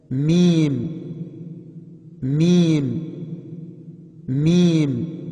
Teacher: دونوں ہونٹوں کی خشکی مل کر میم ادا ہوتا ہے